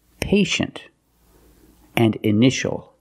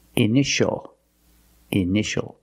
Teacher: And this word, initial, or initials, more than one. We see T-I-A together, so the T is pronounced sh, sh. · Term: sh sound